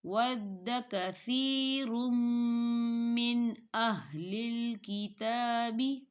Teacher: ہم تنوین کو میم کے اندر مدغم کریں گے اور تھوڑا سا غنہ کریں گے۔ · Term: ادغام